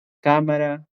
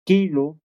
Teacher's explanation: Usted lo siente del velo cuando pronuncia la K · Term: velares